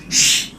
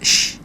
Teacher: sh ditekan, anginnya keluar dari sela-sela gigi. Sh, ya, jadi dibuka sh gitu ya. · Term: sya